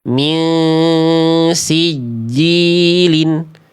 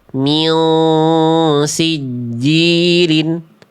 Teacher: Karena sin huruf tipis, maka pangkal lidahnya ketika ikhfa hakikinya, ketika samar dengungnya itu ketika ditahan jangan naik nih ya.